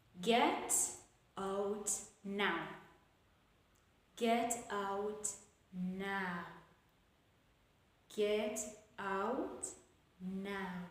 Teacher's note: all the commands will take the falling intonation